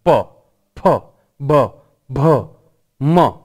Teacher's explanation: બંને હોઠ એકદમ આમ સ્પર્શી અને છૂટા થશે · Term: ઓષ્ઠ્ય